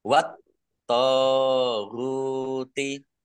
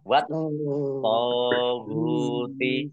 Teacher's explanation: alif lam samsiah karena tidak dibaca langsung masuk ke huruf berikutnya yaitu tok, ditandai toknya ada tasdidnya, toknya dibaca dobel. Wat toguti tok fathah alif matobi'i panjang dua harokat.